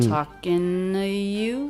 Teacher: So she goes straight from the N sound into the schwa and then right into the U diphthong.